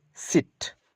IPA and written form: sɪt (sit)